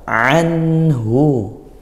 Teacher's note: Anhu, ada ain, lafalkan ain dengan sempurna dari makhrajnya, yaitu pangkal tengah tenggorokan. Anhu izhar halqi dibaca jelas.